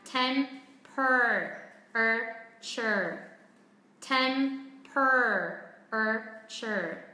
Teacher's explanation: Đây là theo Anh Mỹ thì đằng sau nó có âm er rất là nặng. Temper. Er.